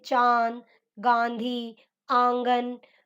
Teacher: अनुनासिक इनका उच्चारण नाक और गले दोनों से होता है